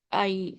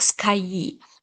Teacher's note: here I, which is a diphthong, small a and e sound